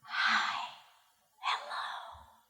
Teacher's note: I just whispered the word hello and everything just sounded like one big H. Hello. The beginning part is the H.